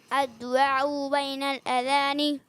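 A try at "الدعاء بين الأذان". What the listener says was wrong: اچھا اب عین جو ہے نا ادھر ادھر زیادہ نکل رہا ہے، تو چلے کوشش کریں ٹھیک کرنے کی. لیکن میں نے بتا دیا کہ عین جہاں ہے وہیں ادا کرنا ہے، حمزہ کو عین نہیں بنانا ہوتا.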